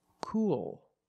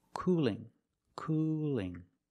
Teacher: light L because it's between vowels so let's hear the difference cool has a dark L at the end but cooling has a light L